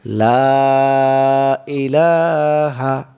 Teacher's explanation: লামের উপর খাড়া জবর এক আলিফ টানতে হয়।